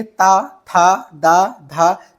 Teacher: सभी हमारी जो जबान होती है वो दांत में लगती है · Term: ता वर्ग